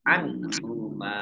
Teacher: nun sukun bertemu dengan huruf ha, bacaan idhar dibaca jelas. Mim fathah alif mat tobi'i panjang 2 harokat.